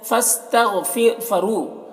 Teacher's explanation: غین کو پر پڑھنا ہے، حروف مستعلیہ میں سے ہے